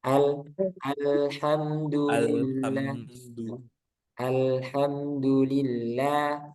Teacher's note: Jadi fathahnya itu nanti sempurnakan ke a gitu. A lebih dibuka nanti.